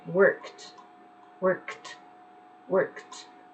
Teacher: all of those verbs with a K in the end, they're non-vibrant. So they're going to sound like a T in the end.